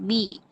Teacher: بے با کی حرکت کو مجھول نہیں کرنا ہے، بے نہیں بنانا جی ہے.